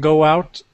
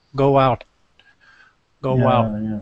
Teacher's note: This is a little pronunciation thing that happens because if you listen, go out, it has a sound like a W in the middle